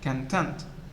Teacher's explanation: So this word can be used as a noun, meaning as in the contents of a book, and so the stress is on the first syllable. When used as an adjective, meaning happy, satisfied, the stress moves to the second syllable